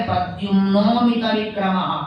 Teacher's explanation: ಪ್ರದ್ಯುಮ್ನೋ ಅನ್ನುವಲ್ಲಿ ಓಕಾರದಲ್ಲಿ ಅಕಾರ ಸೇರಿಕೊಂಡುಬಿಡುತ್ತದೆ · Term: ಸಂಧಿ